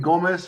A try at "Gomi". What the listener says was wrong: It's Gomi. I think it's pronounced Gomi. Gomi. I think the S is silent. Gomi.